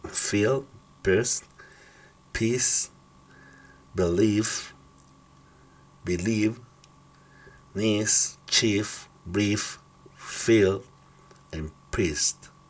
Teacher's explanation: Acá una I larga. Recuérdense que si hay una I y una E, se va a pronunciar aquí en este caso larga